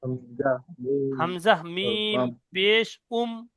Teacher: দুই ঠোটের শূন্য অংশ মিলিত হয়ে উচ্চারিত হয় মিম